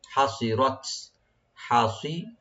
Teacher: হা একবার ওপেন করে একটু গলার মাঝখান থেকে যেন আসে, হা ভার্টিক্যাল করে পড়বেন।